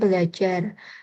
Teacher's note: terjadi penggantian fonem R dengan L akibat dari bertemunya prefiks ber dan kata ajar